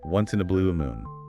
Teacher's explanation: and saying it naturally just put a little bit of stress on blue and moon. Those are the key words carrying the rarely meaning once in a blue moon.